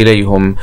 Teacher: إليهم حمزة ويعقوب بضم الهاء